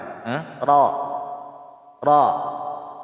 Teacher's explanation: Ang ra, ang litra ng ra, pag siya ay maftuha, ay babasahin siya ng makapal.